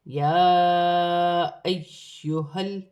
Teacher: یا پر کھڑی زبر ہے، چھوٹی مد مد منفصل، دونوں کو ملا کر 4 الف کی مقدار کھینچ کر پڑھا جائے گا۔ یا مشدد ہے، جماؤں کے ساتھ ادا کیا جائے گا، حمزہ کے ساتھ ملا کر پڑھا جائے گا